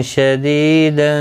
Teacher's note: دی یا مدہ ہے، ایک الف کی مقدار کے برابر کھینچ کر پڑھیں گے